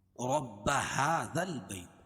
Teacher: ہا رب هذا البیت، ہا کھڑا زبر قائم مقام الف مدہ کے اس کو 1 الف کے برابر کھینچ کے پڑھیں گے